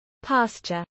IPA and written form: ˈpɑːstʃəɹ (pasture)